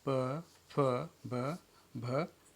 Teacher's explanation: इस फिगर में ट्रेनिज हम लोग देख रहे हैं कि वायु जो है वो बाहर मुख विवर से निकल रही है और दोनों ओठों को हम बंद कर रहे हैं, और बंद करके जब खोलते हैं तब हमारे जो है बायोलेबियल साउंड